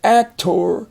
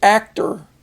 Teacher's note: the last syllable is not accented it doesn't have a stress it's not as loud as the first syllable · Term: unaccented syllable